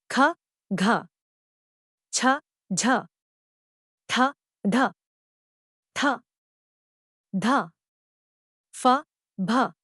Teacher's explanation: महाप्राण व्यंजनों के उच्चारण में मुख से वायु ज्यादा मात्रा में निकलती है · उच्चारण में मुख से वायु ज्यादा मात्रा में निकलती है यानी इनके उच्चारण में श्वास बल अधिक होता है